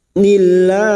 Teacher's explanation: lam jalalah yang didahului kasroh. Kita baca tarkik